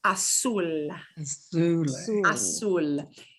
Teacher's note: There should be no buzz with a Z.